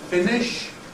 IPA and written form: ˈfɪnɪʃ (finish)